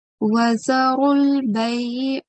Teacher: This ra has a thick sound and we have to join it to lam sakin